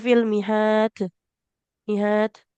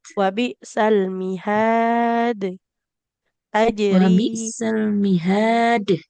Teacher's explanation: huruf dal dengan jimnya ketika qalqalah itu jangan sampai ada hembusan udara.